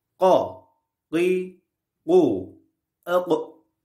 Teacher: Qaf harfi dilin kökünün küçük dile kuvvetlice vurmasıyla çıkar. Kalın bir harftir.